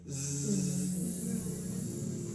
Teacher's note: That has vibration. That's called a voiced consonant.